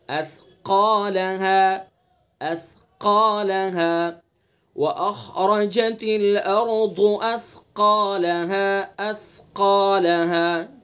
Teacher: قاف کا مخرج بھی آپ نے پڑھا، زبان کی جڑ اور اس کے مقابل اوپر کا تالو